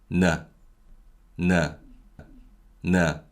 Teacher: And similar to mium, niun is also denasalized · Niun is similar to the English N sound, so it's a voiced nasal sound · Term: denasalization